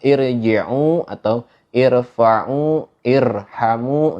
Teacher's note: ro-nya itu dibaca tebal